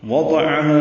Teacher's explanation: واو ہونٹوں کی نا تمام گلائی سے، دو پر جلدی پڑیں، عین وسط حلق سے ادا کریں گے